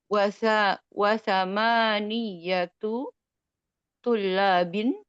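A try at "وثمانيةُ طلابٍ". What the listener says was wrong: Nggak usah ditasydid Umi.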